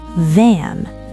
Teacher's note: than has voiced th. Don't forget the vibration.